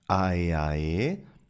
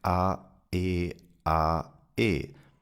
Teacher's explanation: I didn't connect the vowels, but every vowel is pronounced separately. And this is something that happens frequently when a word starts with a vowel in German.